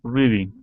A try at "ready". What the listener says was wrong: instead of re it's a short e sound re ready